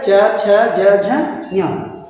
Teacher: चूंकि इसका उच्चारण स्थान तालु है, इसलिए इस वर्णों को क्या कहते हैं? तालव्य वर्ण कहते हैं।